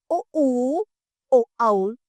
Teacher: पश्च स्वर वो है इन स्वरों के बोलने समय जीभ का पिछला भाग थोड़ा सा उगता है।